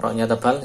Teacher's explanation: Yar kan tidak dibaca tipis, yar tapi yar dinaikkan.